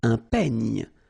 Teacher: Final E, you don't insist on it. It's ny, the last sound.